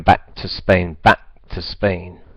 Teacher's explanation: So back, we drop the k.